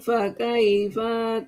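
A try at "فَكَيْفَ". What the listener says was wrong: Fa-nya pendek. Fakaifa, jangan fakaifa, itu jadi panjang.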